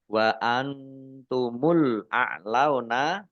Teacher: nun sukun bertemu dengan huruf ta, bacaan ikhfa dibaca samar-samar